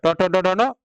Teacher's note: ट ठ ड ढ नो कहाँ से बोला जाता है, मूर्धा से बोला जाता है। आप जीभ को देखिए कहाँ सट रहा है आपका, मूर्धा में सट रहा है